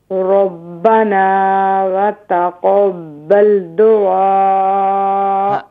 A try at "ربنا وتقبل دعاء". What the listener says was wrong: دعا نہیں دیکھیں دال کے بعد واو نہیں ہے تو صرف دال پر دعا